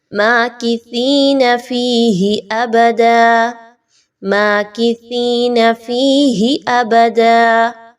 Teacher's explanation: اس کو سین کی طرح نہیں پڑھنا، سیٹی کی آواز کو نہیں لانا